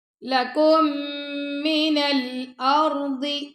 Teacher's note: را کو پر پڑھنا اور ضاد کو بھی موٹا پڑھنا ہے